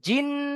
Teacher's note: মিম জের মি, নুন লাম জাবর নাল, মি নাল, জিম নুন জের জিন, নুনের উপরে তাজদিদ এসেছে, নুন মুশাদ্দাদ গুন্না ওয়াজিব আকালি পরিমাণ টান দিয়ে গুন্না করে পড়তে হবে